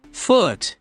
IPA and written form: fʊt (foot)